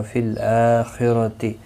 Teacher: فی الآخرۃ حمزہ کے اوپر کھڑی زبر ہے، ایک الف کی مقدار کے برابر کھینچ کر پڑھیں گے۔ خا مستعلیہ ہے، پر پڑھا جائے گا، را زبر کی وجہ سے پر پڑھا جائے گا۔ اور اگر یہاں پر آپ نے وقف کرنا ہوگا تو گول تا ہا ساکن پڑھیں گے۔